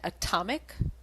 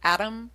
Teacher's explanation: the alternation between the T and the tap sound like in atom and atomic